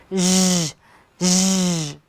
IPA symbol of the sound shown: ʒ